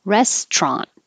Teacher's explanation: we dropped the middle syllable completely